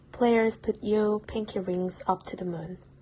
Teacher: deleting certain consonant cluster at the end of the words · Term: Africanamean English